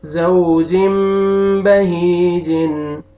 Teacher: آگے دیکھیں یہاں پہ یا مد ہے، یا سکون سے پہلے کسرہ، آپ نے ہا کو کھینچنا ہے، اور یہ سٹارٹنگ میں واو لین ہے، واو سکون سے پہلے فتحہ، زا کو آپ نے نرمی سے ادا کرنا ہے